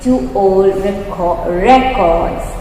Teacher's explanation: Okay, so we're going to be stressing on RE here and make it a noun.